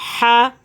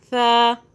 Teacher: ہا کو حلق سے ادا کرنا ہے اور سا کو سافٹ کرنا ہے۔ سین کی آواز میں اس کو ادا نہیں کرنا، سیٹی کی آواز میں نہیں کرنا